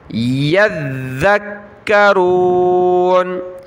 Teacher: ذال پر ہم نے زبان نکالنی ہے اور ذال اور کاف دونوں کے اوپر تشدید ہے تو دونوں کو سخت کرنا ہے۔ یذکرون، یا ذال زبر ید، ذال کاف زبر ذک، کاف زبر کا، یذکا، ٹھیک ہے، یذکرون۔